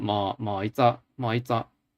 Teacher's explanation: It's a very slight rising to it.